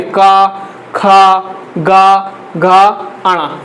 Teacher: का वर्ग को कहाँ से बोला जाता है? कंठ से बोला जाता है।